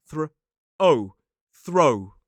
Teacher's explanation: for this word, we have the voiceless th and “oh”